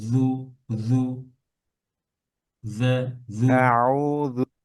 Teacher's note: জিহ্বার আগা একটু বের করে হালকা জু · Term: জাল